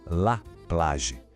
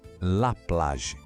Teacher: O A é bem aberto e o G no finalzinho soa como o G de garagem.